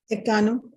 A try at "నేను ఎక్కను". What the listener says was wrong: You need to maintain the short vowel sound అండి. నేను ఎక్కను, నేను ఎక్కను, నేను yeah, because if you use the long vowel sound instead of short vowel sound like ekkanu, it will give meaning in other tense.